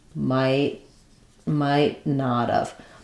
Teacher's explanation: when we're using the negative I might not have uh again we tend to reduce and cut the first part of have changing it to not of I might not of same thing where the t is then